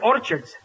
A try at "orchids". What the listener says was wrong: It's not orchids, it's orchids. The CH is pronounced like K.